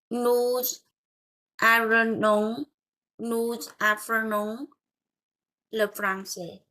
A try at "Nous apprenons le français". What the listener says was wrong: Et là, tu peux dire nous apprenons. Tu peux faire la liaison, tu vois? Nous apprenons le français. Nous apprenons le français.